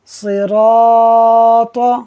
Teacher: ناظرین، یہاں الف سے پہلے را ہے اور را کے اوپر زبر ہے، را پر زبر ہو تو اسے پر پڑھا جاتا ہے۔ جب ہم را کو پر پڑھیں گے تو اس کے ساتھ جو الف ہے وہ بھی پر پڑھا جائے گا